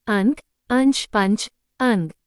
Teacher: अनुस्वार ध्वनि नाक से अधिक मुख से कम